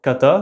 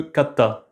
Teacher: Par exemple, kata, c'est pas le même mot que catta. Le t est géminé. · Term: consonnes géminées